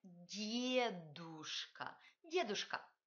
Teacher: la première consonne di est palatalisée. Ne dites pas дедушка, dites дедушка, дедушка.